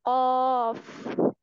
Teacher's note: एंड में फा है, इस पे हम मुंह से थोड़ी सी हवा निकालते हैं।